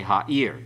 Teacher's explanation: The accent's on the last syllable.